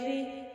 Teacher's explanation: زیر آگے را کے نیچے، اس لیے ہم را کو باریک پڑھ رہے ہیں،